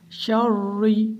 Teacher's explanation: را کو پہلے موٹا پڑھا جائے گا اور بعد میں باریک پڑھی جائے گی